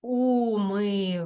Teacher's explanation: звук ш ми неначе проковтнули і його не чути